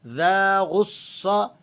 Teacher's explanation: ذال کے بعد الف ہے تو اسے آپ 1-2 سیکنڈ تک کھینچ لیں گے. غصہ صاد ایک تو موٹے پڑے جانے والے حروفوں میں سے ہے اور پھر مشدد ہونے کی وجہ سے مزید اس میں تھوڑی سی سختی آ جائے گی.